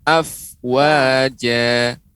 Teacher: Fa kurang dinampakkan desisnya ya.